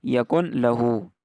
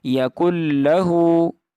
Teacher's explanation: اس میں نون کو لام کے اندر مرج کر دینا ہے، اس کو ایسے نہیں پڑھنا یکن لہو، اس کو اس طرح پڑھنا ہے یکن لہو، یکن لہو کفوا احد، دال کے اوپر قلقلہ کرنا ہے۔